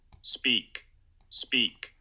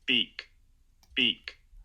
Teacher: its voiceless unaspirated so after an s you don't get a contrast between the two types